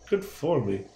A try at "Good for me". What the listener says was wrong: Your enunciation. The emphasis on the wrong syllable.